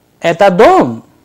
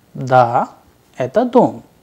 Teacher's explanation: the intonation of a general question is characterized by a sharp rise of tone while pronouncing the last unstressed or stressed vowel in the sentence